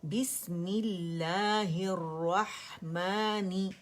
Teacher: با کی کسرہ، میم کی کسرہ، ہا کی کسرہ، اور را مشدد دونوں جگہ پر ہے تو اسے جماؤ دینا ہے